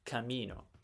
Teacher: as an Italian I have ingrained in me the idea that the second to last syllable has the stress